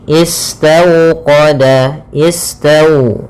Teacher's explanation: Bacaan lin yaitu suaranya adalah lembut pada lafal waw sukunnya. Istawqada, istau dengan dimonyongkan bibirnya.